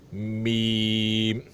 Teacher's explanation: मीम बगैर गुन्ने के, गुन्ना नहीं होना चाहिए, मीम नहीं होना चाहिए।